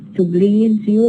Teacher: so we have a change from Z to J